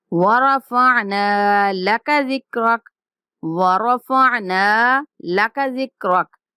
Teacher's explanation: انقض ظہرک، ظہرک الذی انقض ظہرک ورفعنا لک ذکرک، ورفعنا یہاں نون کے بعد الف مدہ ہے تو ہم نے نون کو لمبا کرنا ہے، اور نون کے علاوہ کسی لفظ کو لمبا نہیں کریں گے۔